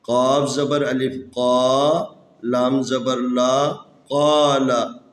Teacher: یہ قاف بھی حروف استعلاء میں سے ہے، اس کو موٹا پڑھنا ہے۔